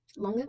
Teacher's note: Keep in mind that the lange, so the word lange, Lange. that's A, it's a closed A, so it sounds like ah.